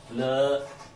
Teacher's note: तो वायु दोनों ओर से निकल के भग जाती है, इसलिए इसको नाम दिया है पार्श्विक व्यंजन।